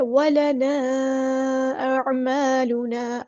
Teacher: عین کو وسطی لیکن زور سے ادا کریں گے. الف مد آئے تو مد اصلی ہوگی.